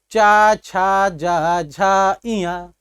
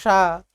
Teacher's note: ना आप अपनी जिह्वा को ऊपर ले जा रहे हैं ना दांत से सटा रहे हैं, आप अपनी जिह्वा को केवल ही तालु से स्पर्श करा रहे हैं।